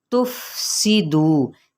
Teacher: سین کی سیٹی کو واضح کرتے ہوئے باریک ادا کرتے ہوئے سین کی زیر کو لمبا نہیں کریں گے، دو کو لمبا